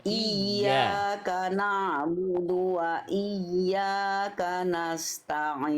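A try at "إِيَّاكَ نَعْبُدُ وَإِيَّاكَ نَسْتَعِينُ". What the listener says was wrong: Ta-nya tipiskan, jangan jangan jangan to. Jadi tadi Bunda gini. Tadi Bunda baca begini. Artinya nasta'in. Coba diulang lagi Bunda dari iyyaka, tekan ya tasdidnya, ta-nya tipiskan.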